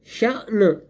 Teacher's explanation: اب یہاں پہ ہم نے شین کو جھٹکا دے کر پڑھنا ہے اس سکون کی وجہ سے.